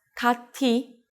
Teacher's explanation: When 디귿 or 티읕 are in the 받침 position and meet the syllable 이, then 디귿 becomes 지읒 and 티읕 becomes 치읒. In this case, 티읕 meets the syllable 이.